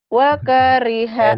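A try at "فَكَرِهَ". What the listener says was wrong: Enak aja, wa. Dari mana, wa? Kok wa? Fakariha.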